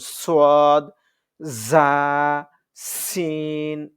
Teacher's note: শীষ দিয়ে আমরা যেমন শীষ দেই এরকম শীষ দিয়ে তিনটার উচ্চারণ হবে